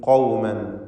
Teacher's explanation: ഖാഫ് തഫ്ഖീം ചെയ്യണം, സ്വരഭാരത്തോടെ തടിപ്പിക്കണം. ഖൗമൻ ആഖരീൻ, തൻവീനിന് ഇൽഹാർ ഹൽഖി നൽകി മണിക്കാതെ ഉച്ചരിക്കണം.